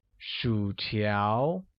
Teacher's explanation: French fries translates as 薯条, which uses a falling rising tone on U and a mid-rising tone on A